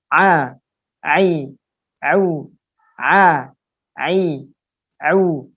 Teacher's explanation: Ain juga tenggorokan bagian tengah ditekan kebawah